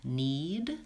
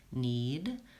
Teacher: in the word need I'm gonna be lengthening the e because it's followed by a D